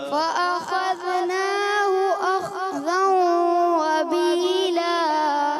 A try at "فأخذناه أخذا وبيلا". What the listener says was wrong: اب آپ نے خواہ کو تو کلکلا کم ہو گیا ہے بہتر ہوا فأخذناه دال میں کلکلا کر دیا دال میں بھی کلکلا نہیں کرنا پیارے بچوں اور مدنی چینل کے ناظرین یہی چیزیں تو سمجھاتے ہیں کہ غیر کلکلا میں کلکلا نہیں کرنا فأخذناه أخذا وبيلا